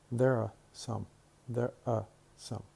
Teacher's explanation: Here we have the word some, and some starts with a consonant. And then if we have a consonant, then we drop the re sound. We simply say schwa.